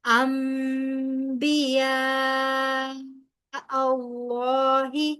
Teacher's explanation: انبیاء اللہ نون ساکن کے بعد با آ رہا ہے، یہاں پر اقلاب کا قاعدہ اپلائی ہوگا، کیونکہ نون ساکن کے بعد جب با آتا ہے تو نون کی آواز کو میم کے ساتھ بدل کر پڑھا جاتا ہے